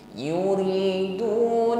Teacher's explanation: ro baris kasrah diringankan bunyinya